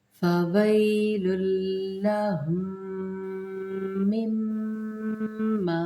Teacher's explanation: ما تشدید کا قاعدے کے ساتھ ہم نے 2 دفعہ غنہ کرنا ہے. اس کے اندر میم کو ادغام کرنا ہے، اس میم کو پھر ہم نے اس کے اندر ملانا ہے.